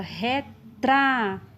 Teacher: Por exemplo, a palavra retrato, eu dou mais ênfase, pronuncio com mais intensidade a sílaba tra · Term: sílaba tônica